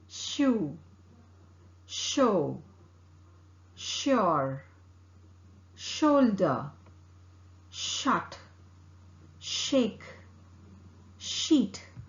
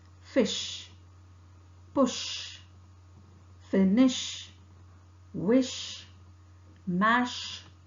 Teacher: articulated with the tip and front of the tongue close to the back of the teeth ridge the air escapes between the tongue and back of the teeth · The air escapes between the tongue and back of the teeth ridge to pronounce sh. The vocal cord does not vibrate. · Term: sh sound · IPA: / ∫ /